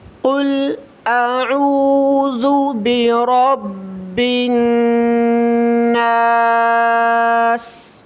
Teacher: قل سب سے پہلے قاف کو موٹا کرنا ہے، فل قاف کو موٹا کر کے پڑھیں، کل نہیں پڑھیں، بالکل گلے سے آواز نکال کر پڑھیں۔ قل اعوذ حمزہ کو صاف واضح کریں اور اس کے بعد عین کو واضح کریں۔